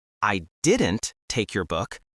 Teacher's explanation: the stress is on didn't, meaning someone else took it. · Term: sentence stress